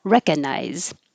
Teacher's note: skip the G completely and just say recca